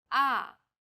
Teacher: the fourth tone Falls sharply and quickly from a high pitch